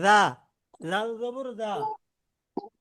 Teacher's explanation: জিব্বারও আগা, সামনের দুই দাঁতেরও আগা।